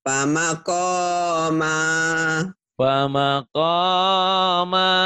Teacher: Ko-nya panjang. Ma-nya panjang.